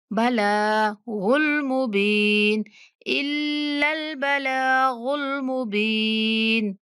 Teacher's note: लाम के ऊपर खड़ा ज़बर, लाम को थोड़ा खींच के पढ़ना है।